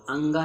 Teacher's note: अंगा जो है आपका कंठ में आएगा, अल्प प्राण में आएगा और घोष वर्ण में आएगा।